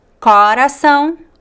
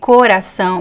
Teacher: some people would say Corazon with the open ah and some people would say Corazon with the closed o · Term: open O